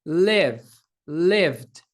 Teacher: as cordas vocais estão vibrando então estamos diante de um Voice sound um som sonoro